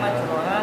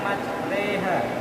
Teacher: Kemudian selanjutnya ada bacaan imalah yaitu di mana huruf ro dibaca reha, tulisannya majroha tapi bacanya majreha